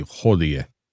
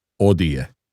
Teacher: In the Italian pronunciation of ecclesiastical Latin, which is the standard set by the Vatican, the H is always silent. For example, in classical, they would say hódie.